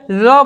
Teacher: ल जब बोलते हैं तो हवा जो होती है दोनों साइड से पार्श्विक होकर स्पर्श करते हुए पार्श्विक होकर निकलती है, इसलिए कहते हैं हम लोग पार्श्विक ध्वनि।